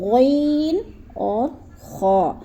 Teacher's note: جیسے غرارہ کرتے ہیں تو آواز نکلتی ہے، ویسے ہی ہم نے آواز نکالنی ہے